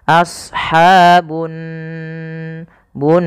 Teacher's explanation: Pada lafal nun, cara membacanya yaitu ditahan suara nunnya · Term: gunnah